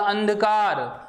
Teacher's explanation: उच्चारण देख लीजिए आप बोलो अंधेरा, अंधेरा, अंधेरा, आप बोलो अंधकार, तो देखो अंधेरा में तो ध्वनि नाक और मुख दोनों से निकल रही है, जबकि अंधकार में ध्वनि केवल किससे निकल रही है? नाक से ही निकल रही है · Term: अनुस्वार